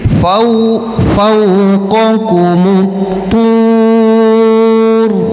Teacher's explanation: Kemudian kita wakafkan jadi tu, maka ro yang kita matikan itu karena didahului oleh huruf waw mad, kemudian sebelumnya berharokat dhammah, maka dibaca tafkhim tebal ya